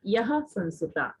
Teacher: विसर्ग दो बिंदी जहाँ आती हैं वहां आपको जो है कंठ से थोड़ा हा का उच्चारण करना होता है ना